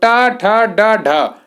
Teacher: और एक और आता है मूर्धन्य में, वो टा, ठा, डा, ढा। जो टा वर्ग है आपका मूर्धन्य में आता है, उसमें जीभ मुड़कर ऊपर लगती है।